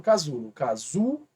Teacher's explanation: ela é uma paroxítona porque a penúltima é mais forte